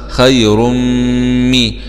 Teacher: راء ضمتين مع الإدغام في الميم المشددة مع الكسر